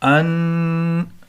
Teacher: النج، جیم اس سے پہلے نون مشدد ہے، نون مشدد والا قاعدہ ہوگا. نون مشدد اور میم مشدد پر ہمیشہ غنہ ہوتا ہے. غنہ مطلب ناک میں آواز چھپانا